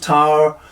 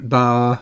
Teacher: Gray makes it clear he wants “tower” and “bower” to be read as one syllable by eliding the “e”